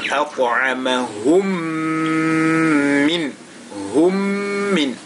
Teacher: On est dans le cadre de Al-Idgham Al-Shafawi. Donc le premier mim qui va donc fusionner, n'est-ce pas, va s'incorporer dans le deuxième mim qui est mutaharrika